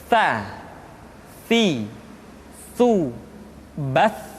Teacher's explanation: ujung lidah disentuhkan dengan dinding dua gigi seri bagian atas.